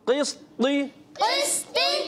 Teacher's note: قاف موٹا سین باریک طا موٹا. قسط قسط آگے وقف آگے وقف قسط قسط قسط قسط یعنی طا کی ادائیگی طا موٹا رہے.